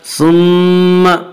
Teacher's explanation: मीम मुशद्दद गुन्ना होगा, गुन्ना की मिकदार 1 अलिफ है। सुम्मा अदबरा, अदबरा दाल पर कलकला होगा।